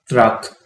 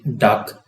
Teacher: ये alveolar sound है, क्योंकि टंग जो है वो एल्वियोलर रिज के साथ कांटेक्ट करती है।